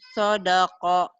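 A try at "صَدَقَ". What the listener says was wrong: Sodako. Gak ada yang panjang Bu. Sodako.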